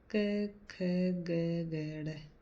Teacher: इनका उच्चारण स्थान कोमल तालु कंठ से ऊपर का स्थान है। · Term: कंठे व्यंजन